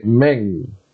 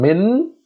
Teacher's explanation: Jim here comes after Noonus Saakinah, and Noonus Saakinah is joined onto the mim with kasra, and that gives us the sound min. Because Jim comes after it, we have to make this noon sound into halfway, so we say ming. Rather than min, we say ming.